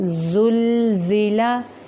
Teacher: زا ہے یہاں پہ زل، سیٹی کے ساتھ تھوڑا سختی سے